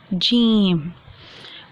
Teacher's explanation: زبان کے درمیان کو تالو کے درمیان کے ساتھ جب لگاتے ہیں، ٹچ کرتے ہیں تو ادا ہوتا ہے جیم